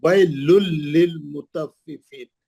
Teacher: तनवीन का इदगाम बिला गुन्ना हर्फ लाम